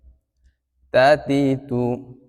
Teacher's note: জিহ্বার অগ্রভাগ সামনের উপরে দুই দাঁতের গোড়ার সঙ্গে লাগবে।